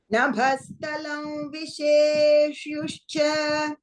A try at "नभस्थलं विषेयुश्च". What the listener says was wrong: विषेयु not विषेयुष विषेयुयुश्च you said human expression